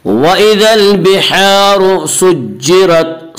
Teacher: سجرت کی را کو پر پڑھا جائے گا، اس کا قاعدہ ہے کہ را کے اوپر زبر پیش آئے تو را کو پر پڑھ جائے گا، را کے نیچے زیر آئے تو را کو باریک پڑھا جائے گا، یا را کے اوپر زبر اس سے را کو پر پڑھیں گے۔